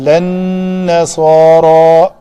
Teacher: اصل کلمے میں یہ نون دو بار نہیں ہے جس کی وجہ سے شد ہے، بلکہ اس لام کا نون کے اندر ادغام ہے، تو اس لیے تو یہ ساکن ہے اور لا کا یہ الف مدہ ہے.